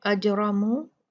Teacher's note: دیکھیں یہاں پر دیکھیے یہ را، یہ والی را، یہ را، اجرمو، پھر مرو، یہ والی را، یہ ہم سب جتنی بھی را ہیں ہم ان کو مفخم پڑھیں گے، موٹا پڑھیں گے